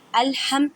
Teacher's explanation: ہا کو ادا کرتے وقت خیال رکھیں کہ ہا کو حلق کے درمیان والے حصے سے ادا کریں